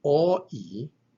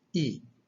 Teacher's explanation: Omicron iota is not going to be pronounced O-E. It's just going to be pronounced E.